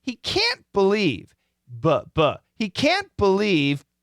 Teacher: when we say can't, we stretch it out. Make it strong.